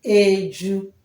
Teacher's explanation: the first and second syllable in education, they are not stressed